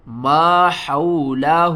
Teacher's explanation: حا کو آپ نے حلق کے درمیان والے حصے سے ادا کرنا ہے اور آواز جو ہے نا وہ باریک ہوگی